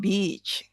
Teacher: Nah, yang pantai agak dipanjangkan saja untuk aman.